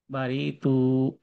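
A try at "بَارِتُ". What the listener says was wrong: রিতে একটু টান হয়ে গেছে, বারিতু,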